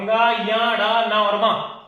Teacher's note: नासिक्य व्यंजन है, नाक से उच्चारित होता है।